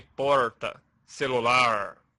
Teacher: Na fala de interioranos de São Paulo, por exemplo, o R é retroflexo